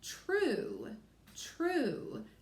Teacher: word is a little tricky it sounds like you're saying ch when I say the word true it does sound like I'm saying that CH sound